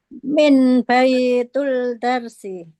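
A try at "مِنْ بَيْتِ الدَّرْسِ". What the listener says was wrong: Nah, min baitil. Nah, ini karena ada min maka dia kasrah Ibu ya, pelajaran sebelumnya.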